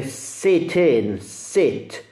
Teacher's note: questo E è molto più simile a una E chiusa e molto breve della I italiana, con la I italiana proprio poco in comune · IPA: /i/